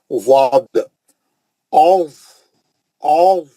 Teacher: और ये मुस्तालिया का है, मोटा पढ़ेंगे